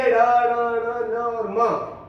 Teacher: उस प्रकार ये पांचों वर्णों के जो पंचम अक्षर है, ये ड, ण, न और म, इनका उच्चारण नाक से होता है। इनका उच्चारण करते समय वायु जो है वो मुंह और नाक दोनों से निकलती है। नाक बंद करके इन 5 अक्षरों का शुद्ध उच्चारण हम नहीं कर सकते, इसलिए इसको नासिकीय व्यंजन कहते हैं।